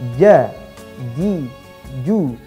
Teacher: Ja tidak boleh terlalu keluar nafasnya, karena jim ini tidak keluar nafasnya. Tidak ca, ci, cu, nah, tidak seperti itu. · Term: huruf jim